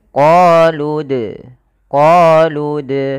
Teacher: Maka qoluana kemudian pada lafal dal sukun di sini ada bacaan kita namakan dengan qalqalah. Dalam pelafalannya kita harus memantulkan dalnya